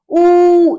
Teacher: पश्च स्वर पीछे से जब हम उच्चारण करते हैं तो आवाज कहां से? पीछे के भाग से आती है।